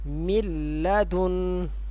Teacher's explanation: نون ساکن اس کو نہیں پڑھیں گے، من لدن، اور یہاں پہ غنہ بھی نہیں کریں گے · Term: ادغام